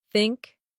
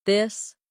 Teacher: The tongue comes gently between the teeth. For think it's soft. For this it's voiced.